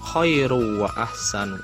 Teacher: itu juga adalah idgham bigunnah karena ada dhammah tain bertemu dengan huruf waw. Cara membacanya masuk dengan mendengung.